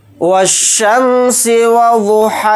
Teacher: वाव को शीन के अंदर मिला देंगे क्योंकि शीन के ऊपर तशदीद है, ये अलिफ नहीं पढ़ा जाएगा